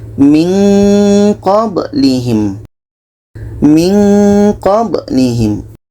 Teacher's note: Ketika kita menyebut nun, kita sudah merasakan huruf qa. Maka seolah-olah ada bunyi eng di situ.